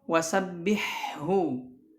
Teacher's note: Kemudian juga untuk mengidharkan ha ketika bertemu dengan ha di dalam kalimah wasabbihu. Nah, tidak diidghamkan.